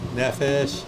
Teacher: notice the accent on the first syllable